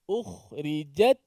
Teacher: Jim pekerjaan tengah lidah, ta pekerjaan hujung lidah.